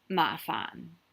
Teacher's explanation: mafan is a low tone for the fan the lowest fan